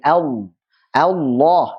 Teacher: Antum lihat di sini catatan Sebagian ulama berpendapat bahwa maksud dari inhiraf di sini adalah menyimpangnya makhraj. Huruf lam makhrajnya menyimpang ke makhraj huruf nun saat mengucapkan lam tebal. Jadi Allah itu menyimpang ke makhrajnya nun.